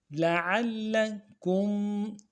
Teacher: لام کو نرم سے ادا کرنا ہے، عین کو موٹا کریں گے اور عین کو لام کے ساتھ ملانا ہے، لام کے اوپر تشدید زور دیں گے